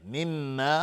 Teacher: میم مشدد دو حرکت غنه میدیم